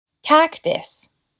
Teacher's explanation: Como es un sustantivo, debe tener el stress en la primera sílaba.